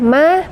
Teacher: ma mad tabi'i karena di situ ada fathah bertemu dengan alif, maka dibaca 2 ketukan